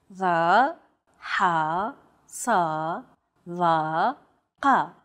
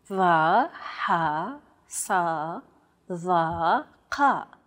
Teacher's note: These 5 sounds are known as emphatic consonants. They're categorized as such because they're pronounced deep within the throat.